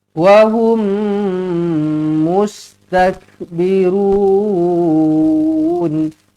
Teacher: mim kosong bertemu dengan mim sabdu idamir jumpa dengan mim sabdu terus rapatkan bibir dengungkan dengan dua harakat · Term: idgham mislain saghir